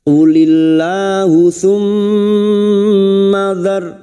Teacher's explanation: mim yang bertasdid gunnah mustadada kita dengungkan selama 3 harakat